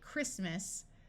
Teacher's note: when we go from Christ to talking about the holiday Christmas the T sound disappears and the I becomes short